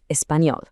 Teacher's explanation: I love how your mouth has to move for that distinct ña in español. It's that beautiful nasal ña sound that gives the language so much of its amazing character.